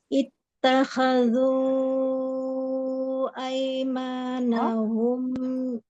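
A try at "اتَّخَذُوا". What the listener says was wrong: Afwan, diperbaiki khonya.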